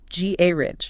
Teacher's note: The British pronunciation puts the stress firmly, decisively on the first syllable.